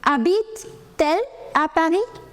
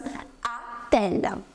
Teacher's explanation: Now, habite ends with a vowel. Elle begins with a vowel. There is a clash of two vowels and you will put T in between.